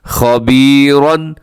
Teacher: خا ہے وہ بھی موٹا پڑا جائے گا، اور آخر میں را کے اوپر حرکات ہیں تو را بھی پر ہے خبیرا. وقف کریں گے تو خبیرا.